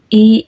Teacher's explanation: Kalau kasrah lidah ini sedikit dikedepankan dan ee di bawah jadi i gitu.